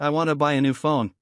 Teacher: where the rhythm falls on want, buy, and new